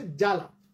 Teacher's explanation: সূত্রটা একদম কমপ্লিট আছে, আরেকবার শেষবারের মতো বলছি, কোন শব্দের শুরুতে যে বফলা থাকে সেই বফলাটা উচ্চারিত হয় না, তবে যে ব্যঞ্জনটার সাথে বফলা যুক্ত থাকে সেই ব্যঞ্জনটা একটু জোর দিয়ে, একটু ঝোঁক দিয়ে উচ্চারণ করতে হয়।